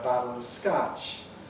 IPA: ə 'batl əv 'skatʃ